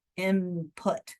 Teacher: instead of saying N, where your tongue is up top, they close their lips early. So it ends up being input because you're gradually getting to that P where your lips are going to be closed. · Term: M sound